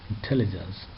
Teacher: Intelligence, second syllable takes the stress.